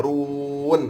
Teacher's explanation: Ra itu ra tafkhim, ra tebal. Ra berbaris dhammah, ra tebal.